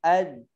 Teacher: Kemudian dalam keadaan sukun, suaranya mengalir. Jadi nafasnya tidak mengalir, suaranya mengalir.